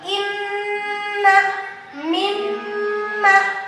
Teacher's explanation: kalau ketemu nun bertasydid dan mim yang bertasydid maka harus ditahan dan ditekan 2 harokat. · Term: gunnah musyad dada